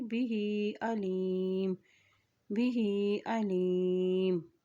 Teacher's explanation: ہاں کے نیچے کھڑی زیر ہے تو اس کو ایک حرکت لمبا ادا کریں گے